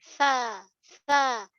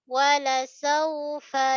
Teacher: fa perut bibir bawah hujung i kacip atas. Pastikan ada hams, angin.